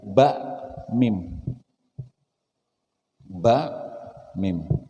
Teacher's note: Ba lawan mim ini satu jenis. Huruf keluarnya sama di bibir. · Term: idgham mutajanisain